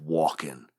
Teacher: it's too inefficient to make the switch from the nasal sound up in the nose to the velar back in the throat. They're too far apart in your head.